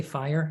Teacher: we say fire in Northern Ireland. It's not one syllable. It's two. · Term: double Irish diphthongs